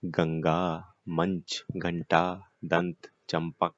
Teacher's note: अनुस्वार। इनका उच्चारण केवल नाक से होता है। अंग, आप बोल के देखिए अंग, तो आपको लगेगा केवल नाक से हो रहा है आपका, और कहीं से नहीं हो रहा है।